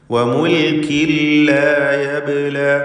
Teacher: ലാ യബ്ല എന്ന് പറയുമ്പോൾ ബാഇൻ്റെ സുക്കൂൻ ഖൽഖല സുഗ്റ നൽകി ശബ്ദം ഹറക്കത്ത് പോലെ ചലിപ്പിച്ച് വ്യക്തമാക്കേണ്ടതാണ്